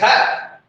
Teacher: जीभ पहले मूर्धन यानी ऊपर वाले हिस्से को स्पर्श करती है और फिर झटके से कहाँ गिरती है? नीचे गिरती है। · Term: द्विगुण व्यंजन